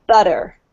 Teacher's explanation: if you get a T sound, as you can see here in butter, in between two vowels, U here and E, it's actually pronounced like a D sound. It's pronounced like this, so they would say butter.